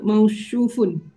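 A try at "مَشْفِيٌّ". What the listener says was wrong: tidak ada waw. Hah? Tidak ada wau.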